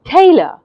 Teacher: you hear the ta part of the word louder than the uh part of the word · I have said tay with more stress